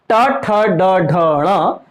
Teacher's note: मूर्धन्य कहलाते हैं ये जो मूर्धा में टच कर रहे हैं